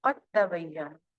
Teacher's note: قاف کو ڈائریکٹ تا سے جوڑ دیا گیا، قد دال بیچ میں سے ختم ہو گیا، قد تبینہ، یہ بھی ادغام ہے، قد تبینہ مکمل ادغام ہے کیونکہ جو جزم والا حرف ہے اس کی آواز بالکل ختم ہو گئی